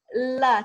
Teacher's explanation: kalau L Arab dia enggak keluar mulut, enggak keluar lidahnya